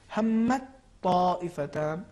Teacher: اس میں پہلے تا کا تلفظ نہیں ہوگا بلکہ تا کا تلفظ تشدید کے ساتھ ہوگا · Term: ادغام متجانسین